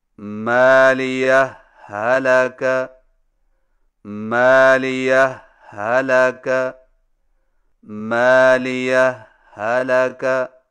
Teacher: پہلا طریقہ یہ ہے کہ دو الگ الگ ہاؤں سے پڑھیں لیکن پہلی ہا پر معمولی سا وقفہ کر کے لفظ حلقہ کی ہا کو بغیر تشدید کے پڑھیں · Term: اظہار